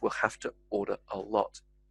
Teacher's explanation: that e sound becomes more of an i sound